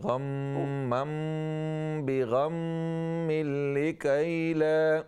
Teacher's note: गुन्ना को लंबा करें, गुन्ना की ड्यूरेशन बढ़ा दें